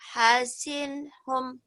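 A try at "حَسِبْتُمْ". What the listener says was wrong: Hasinhum. Bukan. Titik satu di bawah. Bawah. Ba. Naik. Titiknya naik ke atas nun. Naik. Ingat-ingat jangan sampai lupa. Hasibatum ya. Jangan hasintun ya.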